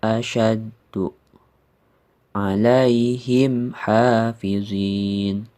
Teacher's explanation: maka dibacanya harus jelas dan tidak berdengung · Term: izhar syafawi